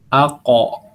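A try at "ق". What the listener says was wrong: Nah, ya pas ketika antum mengharokatkan kof itu malah jadi campur dengan kaf. Kalau kof itu di atasnya kaf, antum bayang-bayangin coba dari makhrajnya gimana.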